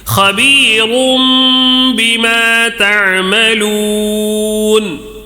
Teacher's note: تنوین کے بعد با آیا ہے، میم سے بدل کر، یہ اقلاب کا قاعدہ ہے، میم سے بدل دینا ہے